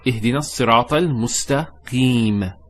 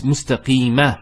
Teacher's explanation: It's mustaqima. There's a fatha there. But we don't pronounce that fatha when we stop. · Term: sukoon